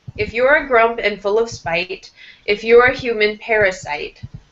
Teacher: with both of these lines, full of spite and parasite, have your voice go down at the end.